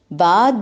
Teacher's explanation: با دونوں ہونٹوں کے گیلے حصے کے ملنے سے